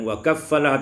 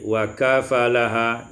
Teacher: Ayat yang ke-37, wa kaffalaha Zakaria, takhfiful fa wal hamzin Zakaria wa hamzi Zakaria madmumah, dan tidak melepaskan atau tidak menggunakan tasdid pada fa